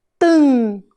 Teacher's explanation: o M perto da vogal, no final da sílaba, também faz o som nasal.